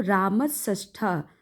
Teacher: जो दंती सा है उसका परिवर्तन मूर्धन्य स में हो जाएगा